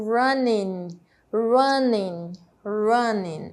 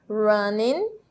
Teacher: Percebam como eu não faço a pronúncia da letra G